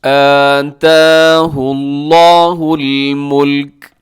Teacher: لفظ اللہ کو موٹا رکھیے گا